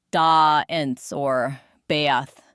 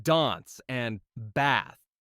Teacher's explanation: In most British accents, you'll hear a longer a sound